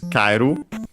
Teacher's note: So actually, kairu, in this case, it's considered a diphthong. So yeah, the accent is on the ka.